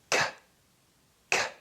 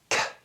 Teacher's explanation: This is an unvoiced sound because we don't use our vocal cords to pronounce or to produce this sound.